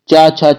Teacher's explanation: च वर्ग जो हमारा तालू के अंतर्गत आता है